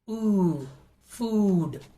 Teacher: The body of the tongue is raised high and is as close as to the roof of the mouth. The jaw drops very little and the mouth is barely open. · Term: long oo sound